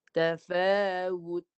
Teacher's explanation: Hujung lidah sentuh gusi atas. Matikan ta. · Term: ta mati